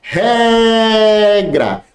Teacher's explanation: Qual é que mais se estende? O ré ou o gra? Ré. Então é paroxítona, é a penúltima.